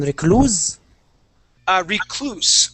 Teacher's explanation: With the S will be an unvoiced S.